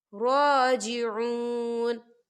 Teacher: रॉ के ऊपर खड़ी हरकत है, तो हम इसे 2 हरकत के बराबर खींचेंगे। कैसे? राजिऊन।